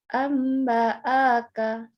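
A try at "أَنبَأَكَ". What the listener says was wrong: Hanya pendek. Yang panjang gunanya. Amba'aka.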